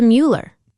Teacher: Instead of Mueller, it's closer to Mueller. The u sound is kind of like saying ew, but shorter and sharper.